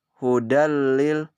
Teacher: Idgham bila gunnah ini apabila nun mati atau tanwin bertemu salah satu huruf lam dan ra, dibaca yaitu dengan masukkan atau meleburkan nun mati atau tanwin idgham tanpa disertai dengan dengung